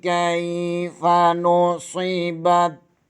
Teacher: صاد کو پر پڑھیں گے، با زبر کو تا کے ساتھ ملا دیں گے